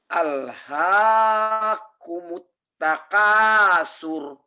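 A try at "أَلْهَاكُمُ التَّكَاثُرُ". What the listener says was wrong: Nah, surnya jangan panjang. Kejebak di sini. Taka ini Pak. Alhaakumut, alhaakumut, takasur, takasur, sur. Alhaakumut takasur. Jangan, ini untuk melatih kalian yang kadang-kadang suka memanjangkan bacaan di ujungnya yang salah. Alhaakumut takasur. Nggak ada sentakan.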